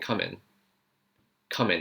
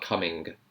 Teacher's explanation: It's just stopping at the N sound. Come in. Not coming.